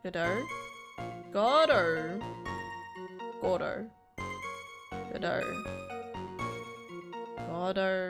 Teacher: People pronounce it. Yeah, emphasis on the first syllable, not the second.